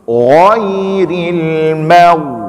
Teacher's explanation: Tipiskan mim dan tebalkan ghin.